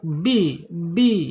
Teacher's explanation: Bi asyafatain dua bibir terkatup bi ya. Kemudian secara sifatnya ada di asyiddah tertahan ketika dia sukun suaranya.